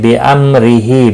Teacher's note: را زیر کی وجہ سے باریک ہوگا، اور وقف کی صورت میں ہا ساکن پڑھیں گے۔